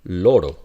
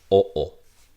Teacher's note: we would have O, which is back mid.